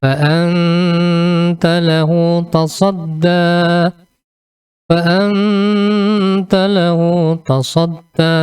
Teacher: Jadi samar-samar antara nun mati dan ta.